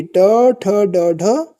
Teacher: ट, ठ, ड, ढ यह जो है ये मूर्धा से बोली जाती है। · त थ द ध न ये हो जाएगी हमारी दंत वाली ध्वनि। जबकि ट ठ ड ढ ये जो है ये मूर्धा से बोली जाती है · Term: मूर्धन्य ध्वनि